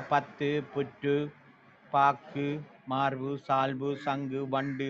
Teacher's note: உகரம் ஊனாண்ட சவுண்ட் குறைந்தொலிக்கிறது என்று சொல்லுகிறோம் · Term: குற்றியல் உகரம்